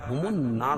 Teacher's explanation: نون مشدد میں غنہ ہوگا اور را کو پر پڑھیں گے، چاہے وقف کی صورت میں ہو یا وصل کی صورت میں، رکنے کی صورت میں یا ملانے کی صورت میں۔